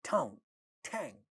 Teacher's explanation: All these initial sounds are aspirated in these monosyllabic words.